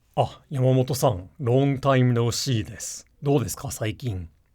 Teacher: I spoke in a very intentionally low voice to kind of mimic the typical Japanese salaryman.